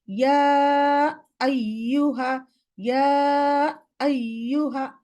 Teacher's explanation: হামজা বেশি শার্পনেস দিতে গিয়া ইয়ার লাস্টে একটা হামজা কাটিং সাউন্ড দেয়, এরকম ইয়া আইয়ুহা, ইয়া আইয়ুহা।